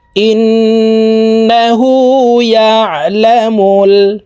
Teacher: তাসদিদওয়ালা নুনের সাথে 3 সেকেন্ড পরিমাণ গুন্নাহ করে ধরে রাখব। এই গুন্নাহকে ওয়াজিব গুন্নাহ বলা হয়।